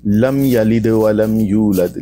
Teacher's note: میم ساکن کے بعد با اور میم کے علاوہ کوئی اور حرف آ جائے تو اظہار شفوی ہوگا، یعنی میم کو ظاہر کر کے پڑھیں گے